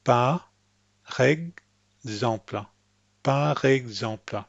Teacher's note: It sounds English because I'm raising the tip of my tongue up to make the English R. Instead, I want you to think par exemple.